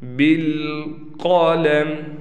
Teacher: قاف کو ہم موٹا کر کے پڑھیں گے